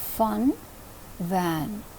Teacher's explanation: here the lower lip is touching the upper front teeth